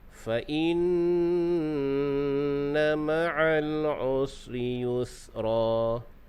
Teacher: Jadi nun dan mim ni bersifat dengung apabila ada syaddah. Jadi di sini nun yang bersyaddah maka dibaca dengan dengung, yang dipanggil dengan wajibal gunnah ataupun wajibul gunnah. Jadi dengung dia boleh sampai 3 harkat, 2 ataupun 3 harkat.